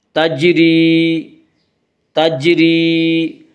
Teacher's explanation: تجری کی را کو باریک پڑھا جائے گا ، اس کا قاعدہ ہے کہ را کے اوپر زبر پیش